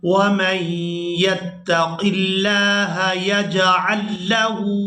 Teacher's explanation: یہاں پر ہم نے ہا کو الٹا پیش کی وجہ سے کھینچ کر ادا کرنا ہے